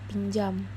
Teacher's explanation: kata pinjam juga jika disebutkan ada huruf Y di antara N dan J.